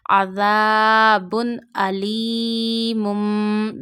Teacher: because hamza is from halki letter pronounced from your throat. When alif contain any fatah, kasra, zamma or any haraka on it, then we read alif as hamza.